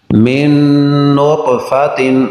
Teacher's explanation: نون ساکن کے بعد نون حروف یرملون ہے، ادغام غنہ کے ساتھ